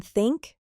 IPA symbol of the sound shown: θ